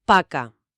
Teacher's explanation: notarás que al principio en la P no vibra nada